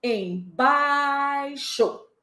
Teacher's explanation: Se bai é a tônica, eu já sei que esse em é átono, é fraco. Eu prolongo mais na segunda sílaba.